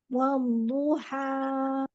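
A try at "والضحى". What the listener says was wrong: Bukan, hanya kepanjangan Umi. Dua aja ya, matobi'i.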